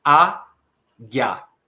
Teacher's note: No Brasil, nós consideramos que o I e o A ficam na mesma sílaba, formando, portanto, um ditongo crescente.